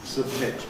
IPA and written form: səbˈmɪt (submit)